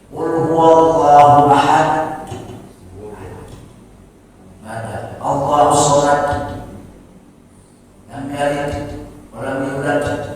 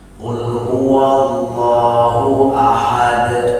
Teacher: qalqalah pantulan alami, tidak ditekan, cenderung ke huruf a